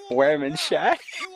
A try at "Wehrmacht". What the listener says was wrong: It's German. W sound like V's.